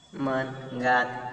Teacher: अकारांतापूर्वीचे स्वर मराठीत लांबट उच्चारले जातात.